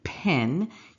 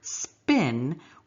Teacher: So an example in English, an aspirated P, as in pen, you hear the P. Whereas when we say the word spin, we don't make a P.